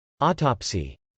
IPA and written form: ˈɔːt.ɑpsi (autopsy)